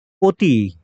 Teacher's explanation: অতি, এটা কি অতি না অতি? এই যে পরের ধ্বনিতে ই রয়েছে, এজন্য আগেরটা ওকারান্ত হয়ে যাবে। এটার উচ্চারণ হবে অটা হয়ে যাবে ও, কারণ পরে ই ধ্বনি রয়েছে।